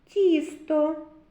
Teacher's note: тісто перший звук ть М'який приголосний